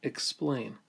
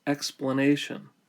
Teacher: reduced from a long vowel to a short vowel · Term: vowel reduction